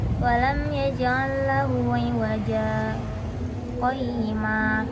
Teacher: Definisi sakta, latifah, yaitu berhenti kira-kira 2 harokat tanpa bernafas dengan niat melanjutkan bacaan